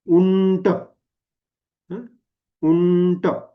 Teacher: कारण पुढचा ट हा कसा आहे, ट वर्गीय किंवा मूर्धाला, ट ठ ड ढ ण, तर तो असल्यामुळे उंटचा उच्चार करताना काय आला तिथे, बरोबर ण बाणाचा आला. तर खरं तर लिहितानाही असं लिहायला हवं आणि उच्चार करतानाही असं करायला हवं, उंट.